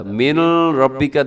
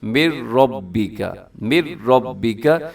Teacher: نون بالکل ختم ہو جاتا ہے، میم کو ڈائریکٹ اپنے را کے ساتھ ملانا ہے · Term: ادغام تام